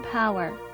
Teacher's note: The P letter depicts a strong aspirated P as in power.